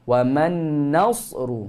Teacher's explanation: Jumpa dengan huruf sad, jangan tebal nun. Wa man nasru, bukan nasru.